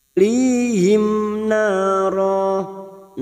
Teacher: Lihim mim sukun bertemu nun. Mim sukun dibaca jelas tanpa mendengung